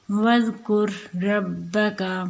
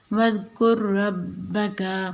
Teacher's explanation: تو یہاں پہ ایک را پڑھا جائے گا، را کو را میں مدغم کیا جائے گا